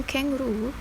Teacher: in kangaroo, the last of its 3 syllables receive the most stress